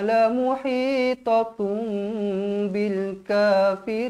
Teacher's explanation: hukumnya iqlab iqlab dibaca dengung dua harakat bibh dirapatkan l muhitum Bil kafirin alif lam qamariah Bil kafirin